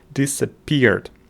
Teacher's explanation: we have the secondary stress is on the first syllable and the main stress is on the third syllable